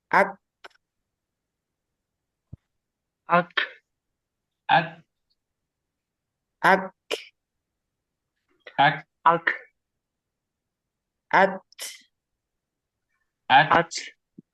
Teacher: untuk khusus Kaf sama Ta dia hamusnya ada di ujung ya bukan di awal